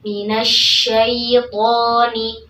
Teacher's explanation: Tidak minasyaiton, syai, tapi syai, minasyaitoni. Kemudian to, tebalkan membaca huruf to-nya. Kemudian ni, ya di sini disempurnakan kasrah huruf nunnya.